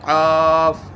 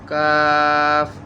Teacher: কফ মোটা, কাফ চিকন উচ্চারণ